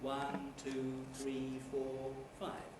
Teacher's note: which involved english speakers reading lists and she found that commonly the earlier items in the list were said with level tones and not with the rises